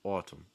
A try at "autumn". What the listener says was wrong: Autumn. Autumn. Autumn.